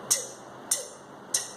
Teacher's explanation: Veja que é voiceless. Ou o britânico também fala unvoiced. Não tem vibração. Então, voiceless.